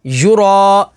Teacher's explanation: را کے اوپر زبر ہے تو را کو پوری یعنی موٹا پڑھیں گے، اور الف سے پہلے زبر ہے تو الف مدہ ہوگی.